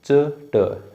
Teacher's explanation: च के बाद ट बोलो, च ट, जीभ थोड़ी सी आगे जा रही है